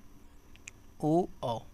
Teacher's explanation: उसमें आपका होठ भी आपके आगे आ रहे हैं ठीक है और कंठ से भी निकल रहा है